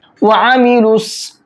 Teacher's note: इस लाम को स्वाद में मिलाएंगे, ठीक है। वआमिलुस, और स्वाद को मोटा करके पढ़ेंगे